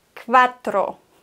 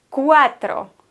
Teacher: Kein W, keine Zähne sind auf der Unterlippe, sondern cuatro.